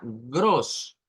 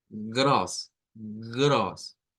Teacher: La fuerza de voz proviene de la parte uvular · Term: R gutural